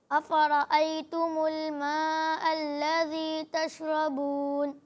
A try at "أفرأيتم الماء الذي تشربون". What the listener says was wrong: اچھی کوشش کی آپ نے, لیکن آپ اپنی را کی ادائیگی کو تھوڑا بہتر کرنے کی کوشش کریں, ٹھیک ہے. را کی ادائیگی واضح ہونی چاہیے, را نہیں لگنا چاہیے, ٹھیک ہے.